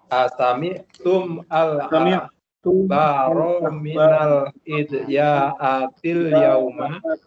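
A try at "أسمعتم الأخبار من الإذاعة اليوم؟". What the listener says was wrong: Jadi disambung saja tum dengan al-akhbar, membacanya asami'tumul akhbar. Nah, asami'tumul akhbar minal idza'atil yauma.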